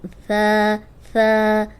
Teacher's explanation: ثا اوپر سامنے والے جو 2 دانت ہیں ان کے اندرونی کنارے پہ، یعنی ان کے کنارے پہ زبان رکھے